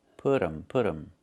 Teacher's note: We make a reduction. We say put 'em. The T changes to a fast D.